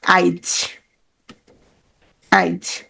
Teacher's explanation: পরের ই বা উ স্বরধ্বনি আগে উচ্চারিত হয়।